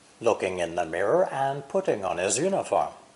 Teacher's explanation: The unstressed words or syllables are in and the. A-N-D, and is nearly always quickly pronounced with no D sound.